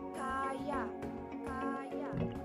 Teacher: dihasilkan dengan cara mendekatkan depan lidah pada langit-langit keras tetapi tidak sampai menghambat udara yang keluar dari paru-paru